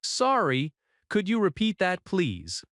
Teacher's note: repeat that, please has a gentle, polite tone, not demanding, calm and steady